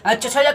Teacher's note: च छ ज का उच्चारण स्थान तालु